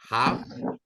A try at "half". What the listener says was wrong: the letter L is not pronounced it's not half no half